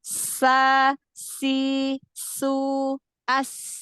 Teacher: Nah, nafasnya mengalir ketika membunyikan huruf sin. Lalu sin juga punya sifat rokhwah, berarti suaranya mengalir